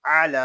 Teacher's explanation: عین حلق کے درمیان والے حصے سے ادا ہوگا اور عین کو ادا کرتے وقت حلق پر زور دے کر اس کو ادا کریں گے۔ لام کو ایک الف تک کھینچ کر پڑھیں گے کیونکہ یہاں کھڑا زبر ہے، یا جو ہے یہ زائد ہے، اس یا کو نہیں پڑھیں گے۔